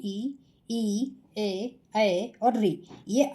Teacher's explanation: अग्र स्वर जीभ का अग्र भाग प्रयोग में आता है।